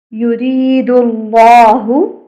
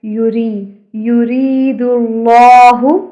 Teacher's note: اللہ کا نام موٹا کر کے پڑھیں اور را کو باریک